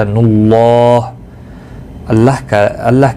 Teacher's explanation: اللہ کا لام پیش کی وجہ سے پر پڑھا جائے گا، یعنی موٹا پڑھا جائے گا